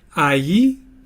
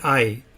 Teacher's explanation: some people pronounce it AI so that they articulate each of the vowels and some people pronounce it I where you kind of articulate both vowels but you're blending them together more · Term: diphthong